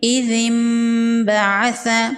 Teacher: نون ساکن کو میم میں بدل کے پڑھیں گے